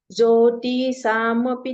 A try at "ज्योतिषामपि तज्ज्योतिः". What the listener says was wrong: ती, ती पे इतना क्यों रुक गई? क्यों इतना रुक रही हो ती पर? ती पर इतना मत रुको। ज्योतिषाम,